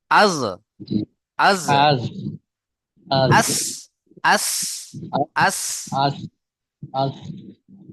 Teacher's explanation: আগার সাথে লাগবে বুঝতে পারছেন চলেন তারপরে দেখেন 13 নম্বর মাখরাজ জীবের আগা সামনের উপরের এবং নিচের দুই দাঁতের আগার সাথে লেগে উচ্চারণ হয় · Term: সিন সদ